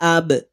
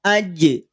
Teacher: Salah satu sifat yang berada pada huruf ba manakala ba sukun itu adalah sifat Qalqalah